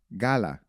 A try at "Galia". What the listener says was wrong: close, but if you listen, there's like a la. It's like a Y and an L had a baby. Galia,